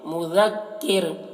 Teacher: ذال کو، کاف کو، را کو، تینوں کو باریک پڑھیں گے